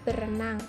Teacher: bunyi r yang ada pada prefiks ber dilesapkan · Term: pelepasan fonem